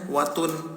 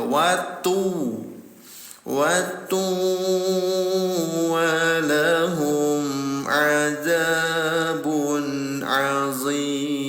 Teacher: bunyi tanwin ini ditempelkan ke huruf wawu baru didengungkan selama 2 rakaat ya. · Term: idgham bi gunnah